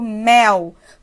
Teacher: Então, esse L está representando o som de U. Se ele representa som de U, então ele também é uma semivogal.